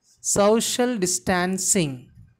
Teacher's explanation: Here the stress should be given on very first syllable, social, and distancing.